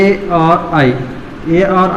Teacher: ए और आई का उच्चारण स्थान कंठ तालु से होगा।